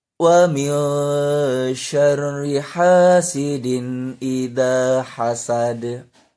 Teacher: Dilatih supaya pelafalannya terasa, huruf h-nya itu terasa lembut, kemudian suara h-nya itu ada seperti bunyi angin yang keluar dari tenggorokan. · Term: ha kecil